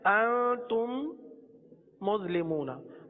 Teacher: मीम साकिन के बाद दूसरी मीम आ जाए तो मीम साकिन में इदगाम शफवी होगा, यानी गुन्ना करेंगे।